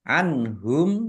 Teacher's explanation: nun sukun bertemu dengan huruf ha, bacaan idhar, dibaca jelas